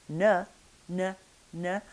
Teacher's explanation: We're going to be pronouncing that N with the tongue tip up against the gum ridge, n, n, n, the tongue curled up.